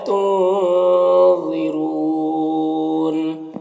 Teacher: را کے اوپر پیش ہے، را کو پر پڑھیں گے